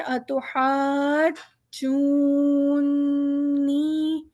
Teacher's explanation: یہ نون پہ ایک تشدید ہے جو نون کو پچھلے والے لفظ سے بھی ملا رہی ہے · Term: نون کی تشدید